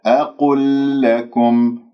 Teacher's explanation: لام أقل مع لام لكم، راح يكون إدغام متماثلين من غير أن أطيل زمنها